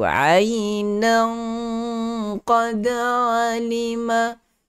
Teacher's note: Kalau siapa yang nak sambung, okey, tanwin bertemu dengan qaf mesti kena gunnah dengan masukkan terus ke dalam makhraj huruf qaf, sembunyikan bunyi tanwin itu ainan qad alima. Dia tebal, jadi bunyi tebal sebab huruf qaf itu ada sifat tebal.